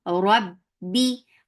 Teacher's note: Ba will get sifa of shidda. Shidda means no flow of sound.